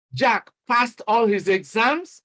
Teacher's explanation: using the rising tone, you can express surprise. · I mean, you are surprised, you use the rising tone to express your attitude to that report.